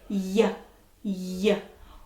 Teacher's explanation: Ooh, my tongue kind of goes to the top, just the middle of my tongue, and then the tip of my tongue touches the back of my teeth.